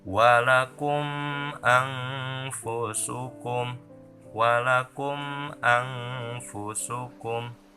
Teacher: si kumnya tidak samar, tidak dimasukkan dan tidak digantikan, tapi jelas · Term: idhar syafawi